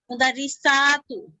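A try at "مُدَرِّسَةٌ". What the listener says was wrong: তু কেন?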